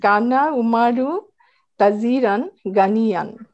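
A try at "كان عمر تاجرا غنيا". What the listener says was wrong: আচ্ছা, তাজিরান। আচ্ছা, আমরা এটাকে তাজিরান মাদটা দিয়ে আমরা পড়বো, মাদটা দিয়ে পড়বো।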